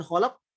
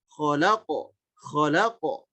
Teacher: Tapi langsung ucapkan kholako, kholako begitu. Ada ucapan suara o-nya dengan jelas, ditambah ada hentakan sebagai khas dari huruf qalqalah itu sendiri